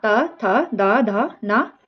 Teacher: ता का उच्चारण जो है वो दंत से होता है · जिसका उच्चारण ऊपर के दांतों पर जीभ लगने से होता है उसे क्या कहते हैं? उसे दंत ध्वनि कहते हैं।